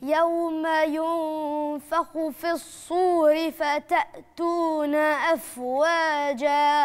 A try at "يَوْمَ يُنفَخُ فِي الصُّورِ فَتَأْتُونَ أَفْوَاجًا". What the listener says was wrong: عايزة الهمزة بتاعي فتأتون.